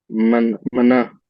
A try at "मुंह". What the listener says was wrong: हाँ, ये असल में है तो मना, लेकिन पढ़ा जाता है मुंह।